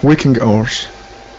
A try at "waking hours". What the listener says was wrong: Okay, all right, nice job. Nice job.